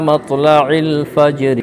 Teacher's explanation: تا کے اوپر کھڑا زبر ہے، کھڑا زبر برابر ہوتا ہے الف مدہ کے، تھوڑا کھینچ کر پڑھیں گے۔ را کے نیچے زیر ہے، زیر کو حالت وقف میں جزم سے بدل کر پڑھیں گے۔